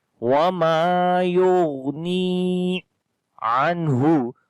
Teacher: Yughni again on the ghain rakhawa quality, do not make qalqala, and also the heavy sound. Ni we long due to ya madda, ya is coming with sukun sign and there is kasra before the ya.